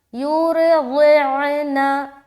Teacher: ठीक, तो अब ये जो लफ्ज़ है इसमें आपको समझ आ गया कि आपको रा और दौद मोटा अदा करना है और या में आवाज़ मजहूल ना हो